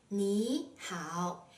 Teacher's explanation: the first third tone is pronounced as a second tone